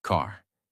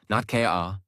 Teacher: In American accent, you clearly hear the R. · In American English, the R sound is strong and clear. It is not silent. It is not weak. It is fully pronounced. Your tongue moves slightly back. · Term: American R sound